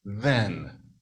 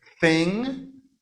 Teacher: you say voiced and voiceless, interdental fricative